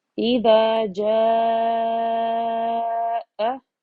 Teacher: اسی کلمے کے آخر میں یا آخری حرف حمزہ ہے، جس کی وجہ سے یہاں پر مد متصل ہوگا اور اسے الف مدہ کو 3 الف برابر پڑھا جائے گا